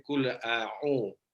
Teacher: hamzah dengan ain ini karena dia dari tenggorokan bawah ke tenggorokan tengah itu memang agak ini susah untuk untuk mengalir.